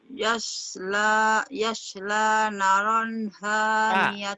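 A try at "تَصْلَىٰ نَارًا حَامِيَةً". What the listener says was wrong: Titiknya di atas. Tasla.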